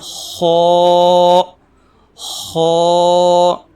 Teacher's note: خا ان حرفوں میں سے ہیں جن حروف کو موٹا پڑھا جاتا ہے، یعنی منہ بھر کے اس کی آواز نکلتی ہے